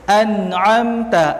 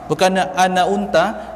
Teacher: Bunyi ain ni dia bukannya di hidung ya, dia bukan di hidung. Dia memang di tengah-tengah kerongkong.